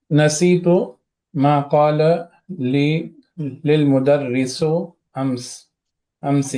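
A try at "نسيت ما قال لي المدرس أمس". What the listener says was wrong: ली ली ली लिल मुदर्रिसु ने, ली अल मुदर्रिसु। लिल बोलेंगे तो वो अलग चीज हो जाएगी, ली अल मुदर्रिसु। ये या मुतकल्लिम है यहाँ पे। वो जो मुझसे कहा मुदीर ने कल।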